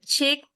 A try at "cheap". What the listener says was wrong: Está sonando una K en su garganta. No, solo volvió a sonar una K. No es chic, cheap. Ah, está sonando una K y luego usted hace la P.